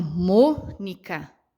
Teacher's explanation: o mo é a palavra, a sílaba tônica mais forte que eu consigo pronunciar